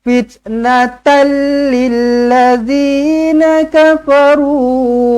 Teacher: nampak macam sedap tapi salah sebenarnya Sebab Dia idgham Bila Ghunnah idgham bila ghunah tak payah dengung masukkan sahaja